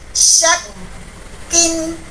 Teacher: huruf shinnya dibaca 1 harokat. Tidak boleh kita panjangkan